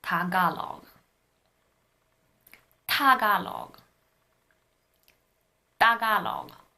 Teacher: Tagalog starts with a T, but if you really listen to it, it's not an aspirated T.